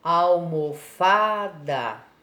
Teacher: Qual que a gente levou um pouquinho mais de tempo? Foi o Fá. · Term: sílaba tônica